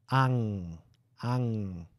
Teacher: ela é uma consoante nasal, que a gente faz lá perto da campainha · Ela é muda no início, mas nasal no final.